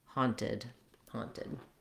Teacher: then you want to have a puff of air for that t